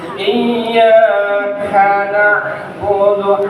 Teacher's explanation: Ada hamas di kaf sedikit Pak, angin ada angin sedikit Pak. Iyyaka na'budu, ainnya dapetin Pak.